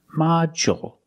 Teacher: And we have this word, module. With module, the stress is on the first syllable. So the second syllable is short.